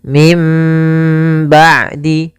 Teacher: kami memilih untuk membaca dengan idbak yaitu bibir kita tertutup dengan rapat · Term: idbaq